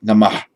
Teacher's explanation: In ancient times, it's perfectly possible, in fact more likely than not, that there was no echo of a vowel after it, that the word Namah be probably pronounced just like Namah, with no following vowel. In modern India, if it appears at the end on its own, or at the end of a sentence, end of a verse, end of a word group, it's pronounced Namaha.